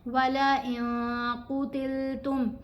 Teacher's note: اخفا کرنے والا نون ساکن کے بعد قاف ہے تو نون کی آواز کو واضح نہیں پڑھا جائے گا، ناک میں چھپا کر بھی پڑھیں گے اور ایک الف کی مقدار جتنا ٹھہر کر بھی پڑھیں گے